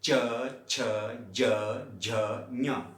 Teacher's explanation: अब आप देखें जीभा हमारी कहां पर स्पर्श कर रही है? तालु से। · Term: तालव्य